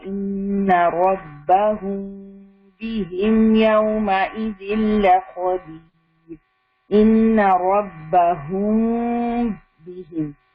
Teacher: آپ یہاں پر غنہ کر رہے ہیں، میم کو آپ نے ہلکا سا چھپایا ہوا ہے، لپس آپ کے لٹل بٹ کھلے ہوئے ہیں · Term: اخفاء شفوی